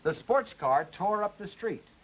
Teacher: Secondary stress now on tore.